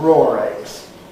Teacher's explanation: We've also noticed the interesting phenomenon of intrusive R where if the eggs were raw, uncooked, we might call them raw eggs. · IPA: /ˈrɔːr ˈegz/